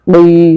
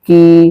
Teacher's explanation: কফ খারাজের ওই মোটা আওয়াজে, কফ খারাজের ওই। কাপ খারাজের কি পাতলা আওয়াজে, কাপ খারাজের কি।